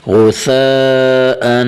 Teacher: غین پیش غو، ثا الف مد زبر ثا، غثا، حمزہ دو زبر ان، غثاء، آخر میں تھوڑا سا غنہ کرنا ہے تنوین پہ، غثاء۔ ثا میں اپنی زبان کو اوپر والے دانتوں کے نیچے سے حرکت دے کے آواز نکالیں، غثاء۔